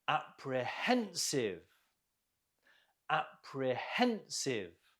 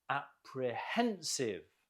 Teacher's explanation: Note the stress on the hen.